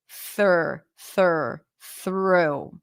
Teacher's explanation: you stick the tongue out for the th F and then you pull in the tongue for the r th try not to touch the upper pallet on the way